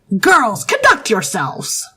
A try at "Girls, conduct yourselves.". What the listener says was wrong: There's a weird twang there. Yeah, it sounded like there was a twang.